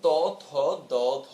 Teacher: একদম দাঁতের সামনের যে অংশ সেই সামনের অংশ দিয়ে আমরা উচ্চারণ করি সুতরাং এগুলোকে আমরা বলছি অগ্রদন্তমূলীয় বর্ণ যেগুলোকে আমরা দন্তবর্ণ বলেও অভিহিত